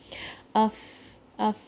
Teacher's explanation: ہم نے اپنا مخرج جو ہے وہ اپنے باٹم لپ کی انر سائڈ اور ٹاپ انسائزر سے اپنا جو مخرج ہے اس کو سافٹلی بند کیا, سے ویک مخرج, فا کا مخرج ویک ہوتا ہے.